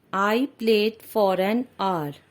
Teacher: Here the word R is starting with the consonant H, and here H is silent, and it seems that the word is starting with the vowel O. So the article an has been used here.